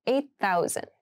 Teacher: when you pronounce this the eight and thousands sound like they connect a little bit